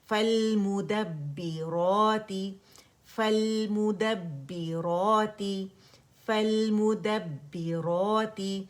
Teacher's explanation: را فتح، الف صغیرہ کو ہم نے اسٹریچ کرنا ہے تو الف مدہ بن جائے گا · مد طبیعی حرکتین 2 کونسنٹ سے کھینچنا ہے